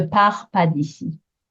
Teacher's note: part and pas being a little bit shorter, both with silent letters at the end, a silent S, a silent T, quite short